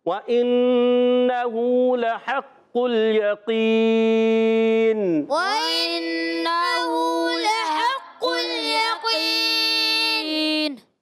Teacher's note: हरफ़ मद्दा के बाद सुकून आर्ज़ी आ रहा है, मद्दे आरिज़ में और ज़्यादा लंबा करते हैं